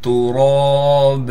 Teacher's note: را پر کڑا زبر ہونے کی وجہ سے را کو ایک الف کی مقدار کھینچیں گے بھی اور را کو موٹا بھی کر کے پڑھیں گے